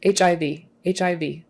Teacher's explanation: make sure there's that little tiny little closing off of the throat in the back that tells us those are separate sounds